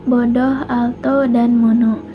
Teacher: Lalu yang kelima ada fonem O, yaitu vokal sedang, belakang, dan bulat